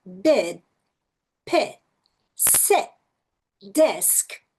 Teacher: O I curto é fechadinho.